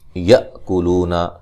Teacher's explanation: حمزہ کو جھٹکے سے ادا کریں گے